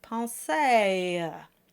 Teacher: And the reason for that is that English speakers usually open too much when voicing the A sound. And then they stretch it out for the added schwa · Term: diphthong